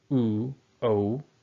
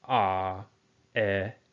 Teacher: We have a rounded lip and then a unrounded lip.